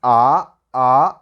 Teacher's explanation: you have to increase your voice from low to above your pitch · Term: second tone